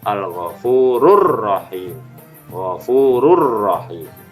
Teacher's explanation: Berikutnya adalah alif lam diikuti dengan huruf ro, maka melebur, yang dibaca dengan benar al-ghafurur rahim.